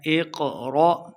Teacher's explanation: حمزہ ساکنہ ہے تو جھٹکے کے ساتھ پڑھیں گے